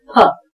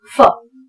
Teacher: दोनों होंठ जब मिलते हैं तब ये उच्चारण निकलता है फ, जबकि अंग्रेजी में उच्चारण लिप्स को टच न करते हुए अगर किया जाए तो जो उच्चारण होगा फ। जो कि उर्दू में होता है।